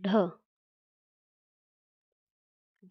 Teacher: जब हमारी जिह्वा मुड़कर ऊपर की ओर स्पर्श करेगी तो उच्चारण स्थान क्या होगा? मूर्धा होगा।